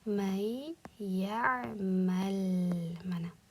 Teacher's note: Mana shu holatda mana bu yerdagi sukunli nunni mana bu o'zidan keyingi yega yo'liqqani uchun, bu yerda g'unnali idg'om qoidasi bo'lgani uchun birinchi qiladigan ishimiz idg'om qilish. Ya'ni mana bu yerdagi nun yega aylanib ketadi.